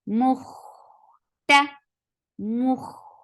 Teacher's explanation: Attach it kha. Kha will get sifa of rakhawa, and kha is heavy. Mukh, the sound should flow.